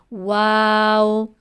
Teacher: دونوں ہونٹوں کی گولائی سے، یعنی دونوں ہونٹوں کو گول کرنے سے ادا ہوتا ہے۔